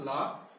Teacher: इसी प्रकार ला, जब ला बोला जाता है तो जीभ क्या है, मुख अवयव से बंद कर देती है और हवा जो है बाहर से साइड से निकल जाती है, बगल से निकल जाती है